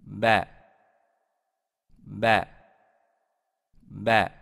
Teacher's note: звук Б. Средний согласный звук. Произносится. Губы хорошо прижимаются друг к другу. · После Б огласовка А произносится Э-образно.